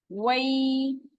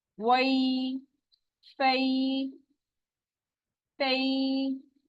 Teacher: वा के लिए होंठों को बिल्कुल गोल करना है।